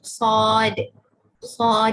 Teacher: huruf sad kita bunyikan dengan keadaan tebal ataupun munculkan bibir.